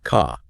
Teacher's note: That R sound after a vowel is dropped. So, car sounds more like ca.